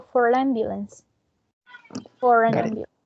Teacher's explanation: because of the following sound is a vowel sound, we say fora. We do pronounce the final R sound.